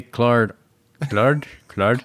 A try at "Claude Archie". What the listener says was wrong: You were trying to get the Archie in there too quick. It went Claude on you.